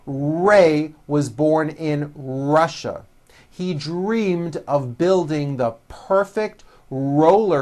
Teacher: notice how my lips come forward on all my RS and W's